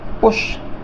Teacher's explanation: इसमें यू है, यू को बोलेंगे ऊ की आवाज़ में यानी थोड़ा ह्रस्व बोलेंगे, कम समय के लिए बोलेंगे